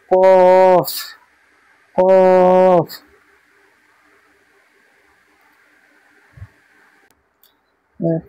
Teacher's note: কফের মাখরাজ হচ্ছে জিভের গোড়া, জিভের গোড়া এবং তার বরাবর উপরের তালুর সাথে লাগিয়ে উচ্চারিত হয়